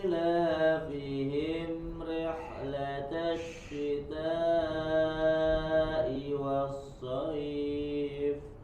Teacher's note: tidak ada jeda, langsung disambung ke huruf setelahnya